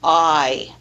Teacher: begins at the bottom of the vowel quadrant in the low Central area and Glides forward with Y forming the dipthong I so the three dipthongs of of North